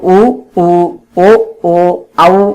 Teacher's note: உ ஊ ஓ ஓ ஔ ஆகிய எழுத்துக்கள் இதழ்களை குவிப்பதன் மூலம் பிறக்கின்றன